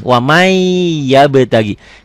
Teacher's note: Katakan idgham bigunnah itu tulisan dan bacaannya beda. Tulisannya waman, bacaannya wamai. N-nya masuk ke Y